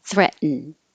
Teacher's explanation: the past tense will sound the same because you won't hear the D released with a duh at all